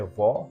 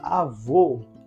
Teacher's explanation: logo eu sei que o timbre da letra O neste exemplo é um timbre fechado o então o acento gráfico está indicando ele define o timbre